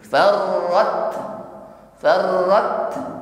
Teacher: Setelah syiddah tertutup, kita lepas makhrajnya, ada nafas yang mengalir. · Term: hamas